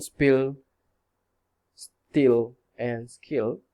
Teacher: After the S, we find plain unaspirated allophones